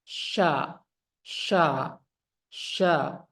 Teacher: huruf syin dia sifatnya hams jelas napas mengalir Sya deras kemudian rakhawa suaranya juga jelas dilepas sya sya sya as Sya istifal biasa saja lidahnya tidak naik